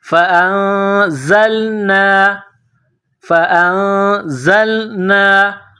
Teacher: نون ساکن کے بعد زا ہے، حروف اخفا ہے، تو یہاں آواز ناک میں چھپائیں گے، غنہ کرنا ہے۔ زا کو لام کے ساتھ ملانا ہے۔